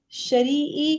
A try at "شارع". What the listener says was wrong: یہ شریع تو نہیں ہے. شاہ ہے یہ شاہ. الف بھی ڈلا ہوا ہے نا. شارعی.